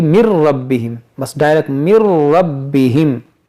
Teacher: اور یا نون ساکن کے بعد را ہے تو یہاں پر ادغام کریں گے بغیر غنہ کے، یعنی اس میں غنہ نہیں کریں گے کہ من ربہم اس طرح نہیں، بلکہ من ربہم، بس ڈائریکٹ من ربہم.